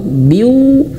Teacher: maka masukkan ke huruf wau biw dan dia juga dengung masuk hidung